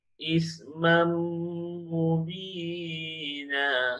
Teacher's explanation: Kita masukkan tanwin ke huruf selepasnya iaitu huruf mim.